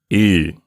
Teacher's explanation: have to make a little bit of effort again it's the e in feet but you make your lips rounded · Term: Upsilon